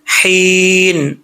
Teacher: हा बरीक है, इस हा का ताल्लुक हल्क से है, सीने से नहीं है